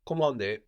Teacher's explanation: the N here that we have at the end of the syllable is kind of silent